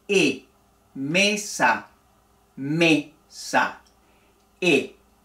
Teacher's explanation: la e se cierra un poco la boca y los labios permanecen estirados e mesa mesa e y enseguida la i con los labios